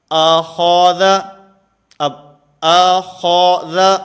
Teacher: حمزہ بھی باریک ہے، ذال بھی باریک ہے، اور درمیان میں خا یہ موٹا ہے ، تو ان دونوں کو باریک پڑھنا ہے اور درمیان والے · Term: موٹا حرف